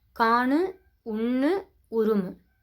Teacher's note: மெல்லின உகரமும் இடையின உகரமும் ஒரு சொல்லோட இறுதியில் இடம்பெறும் பொழுது முழுமையாக ஒலிக்கும். அதாவது தனக்குரிய ஒரு மாத்திரை அளவுக்கு முழுமையாக ஒலிக்கும். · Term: முற்றியலுகரம்